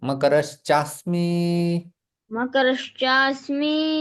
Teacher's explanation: अस्मि विसर्ग का श में परिवर्तन और सवर्ण दीर्घ संधि।